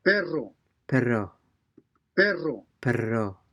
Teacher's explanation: so the spanish r r is a vibrating or trilling sound